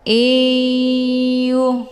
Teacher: Nun sukun ketemu ia yang bertasydid ini dinamakan dengan idgham bi ghunnah atau juga disebut dengan idgham ma'al ghunnah. Cara bacanya, nunnya dimasukkan ataupun dileburkan ke dalam huruf ya dengan cara ditekan kemudian ditahan lebih kurang 2 kali ketukan. Iyuh. Hukum bacaan idgham bi ghunnah didengungkan.